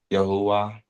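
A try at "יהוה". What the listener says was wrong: where you get the who from?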